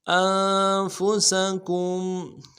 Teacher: حمزہ کو نون ساکن کے ساتھ ملانا ہے، نون ساکن میں غنہ کریں گے